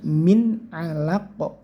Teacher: jangan sampai min, enggak pakai ne tapi jelas karena ini idhar, nun sukun bertemu ain, ini idhar.